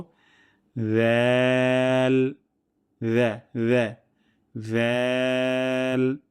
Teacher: আমরা সা যেইখান থেকে উচ্চারণ করেছি, জাল একই জায়গা থেকে উচ্চারিত হবে। জিহ্বার আগা এবং সামনের উপরে ২ দাঁতের আগা থেকে পাতলা সাউন্ডে উচ্চারণ করব।